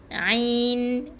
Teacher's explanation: huruf ain tadi dalam kerongkong balik dalam tekak kita halkum ni